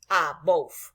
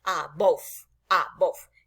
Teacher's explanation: No olvidemos que en inglés cuando una palabra termina en E, la E no suena y la V tiene una fonética de labio dental, de labios y diente, como la F